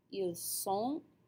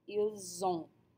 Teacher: ils sont, they are, we hear the S sound of the sont, but ils ont, they have, we hear the Z sound of the liaison